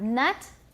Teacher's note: Tip of the tongue is raised to touch the alveolar ridge. This is lowered, not touching the pharyngeal wall, and it's voiced.